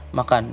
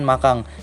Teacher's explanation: karena faktor pengaruh bahasa daerah yang tidak mengenal fonem N pada akhir kata, sehingga kadang-kadang kata-kata makan dilafalkan makang.